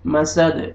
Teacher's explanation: وقت کی صورت میں دال ساکن ہو جائے گا پھر دال پہ قلقلہ کریں گے